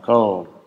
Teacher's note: der velarisierte ist dann doch vorne artikuliert und hat nur hinten noch so eine Zusatz Artikulation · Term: velarisierte laterale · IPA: ɫ